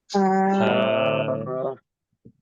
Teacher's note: এটা উচ্চারণ হবে গলার হা মাঝখান থেকে একটু চাপ দিয়ে আসবে।